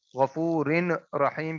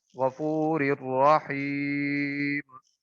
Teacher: را کے نیچے تنوین، اس کے بعد را ہے تو یہاں پہ ادغام بلا غنہ ہوگا